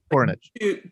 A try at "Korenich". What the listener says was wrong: Two syllables, Cornick. Like a hard K sound.